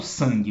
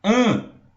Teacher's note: O AN de san, eu só falo an. É um som só. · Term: vogal nasal